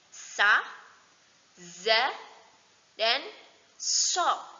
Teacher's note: ujung lidah ditekan ke belakang gigi kapak yang bagian bawah